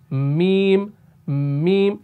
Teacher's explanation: जब आप इन दोनों को आपस में मिलाएंगे ऐसे मीम मीम सीधा लग रहा है कि भाई खुश्क होंठ आपस में मिल रहे हैं